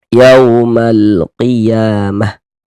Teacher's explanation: Huruf waw sukun sebelumnya harokat fathah, tanda baca fathah. maka huruf waw sukunnya adalah huruf lin. Maka kita baca lunak, kita baca lembut.